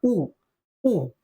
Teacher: उ या स्वरांचा आपण जर उच्चार केला तर आपलं तोंड पुढे मित्रांनो निमुळतो